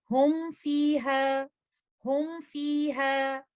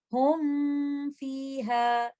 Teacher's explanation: یہاں پر ہم میم ساکنہ کے غنہ کو بہت زیادہ سٹریچ نہیں کریں گے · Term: انکمپلیٹ غنہ